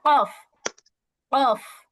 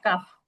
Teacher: আর যদি মাখরাজ অনুযায়ী বলো, তাহলে জিহ্বার গোড়া ঠিক তার বরাবর উপরের তালুর সঙ্গে লাগাইয়া 2 নোক্তা কফ, কফ। আর কাফ হচ্ছে তার থেকে একটু আগে বাড়াইয়া কাফ।